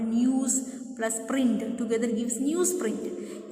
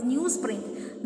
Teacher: A news ends with z sound, and when it is joined by print, because of the influence of the sound p, what happens? It becomes newsprint. Z becomes s. Such kind of a change is assimilation.